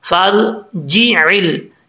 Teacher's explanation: فَا کو جب را سے ملائیں گے تو بیچ میں جو الف ہے یہ گر جائے گا۔ اکثر لوگ سمجھتے ہیں کہ الف بھی پڑھا جائے گا اور را کے ساتھ جب کنیکٹ کریں گے فَرْجِعِلْ پڑھتے ہیں، یہ غلط ہے۔ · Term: الف گر جائے گا